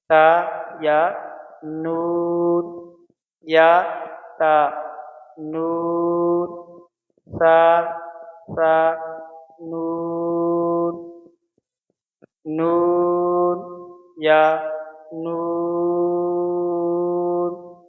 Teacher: تا کو نہیں کھینچیں گے نہ یا کو کھینچیں گے، صرف نون کو 3 سے 5 الف کے برابر ہم کھینچ کر پڑھیں گے